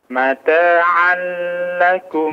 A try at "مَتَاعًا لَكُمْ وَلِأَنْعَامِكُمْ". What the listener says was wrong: La. Tanpa kepanjangan. ya, jangan panjang.